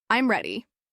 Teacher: Now say each answer. With falling pitch. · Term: falling intonation